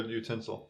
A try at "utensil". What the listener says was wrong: Why do you say it like that? Utensil. It's not tinsel. Utensil.